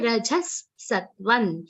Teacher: Sattvam word in the third charan is having the nasal consonant, the Anuswar is pronounced like Na.